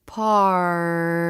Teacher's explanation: sound try holding out the sound before and after party then you can really feel the tongue flap bouncing against the roof of the mouth